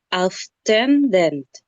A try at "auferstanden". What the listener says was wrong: Se está saltando una sílaba. Tiene que decir auf er, esa sílaba. Auf er stenden.